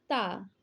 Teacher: ता जो है दंत ध्वनि है